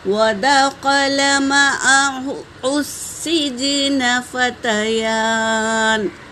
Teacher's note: یا پر کھڑا زبر ہے تو ایک الف کی مقدار کھینچیں گے